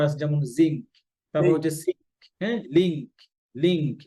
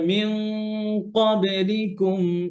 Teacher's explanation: তো কাফের সময় গুণা পাতলা হবে, কফের সময় গুণা হেভি, আচ্ছা, ভারী হবে